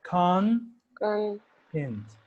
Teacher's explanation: I can stress the first syllable and I say con int so this is higher like higher intonation and this is lower intonation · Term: word stress